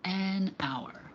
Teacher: the H at the beginning of the word hour is silent. So the first part that is pronounced has a vowel sound